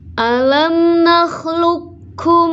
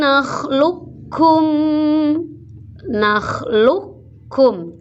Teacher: tidak ada Qalqalah langsung di idghomkan dimasukkan ke huruf Kaf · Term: idgham mutaqaribain